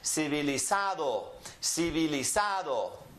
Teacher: it is the next to last that gets emphasized